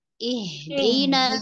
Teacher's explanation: bukan Ih tapi ihdi mengalir dari tenggorokan bawah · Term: huruf ha